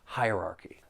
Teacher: There are four syllables. The stress is on that first syllable and the second syllable.